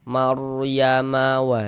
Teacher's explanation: Sebelum ro sukun sebelah sininya nih ini ro sukun sebelah kanannya sini ada yang memiliki harakat fathah. Maka huruf ra sukun dibaca tabkhim dibaca tebal. Tebal kan huruf rnya sehingga pangkal lidah kita naik terangkat ke atas.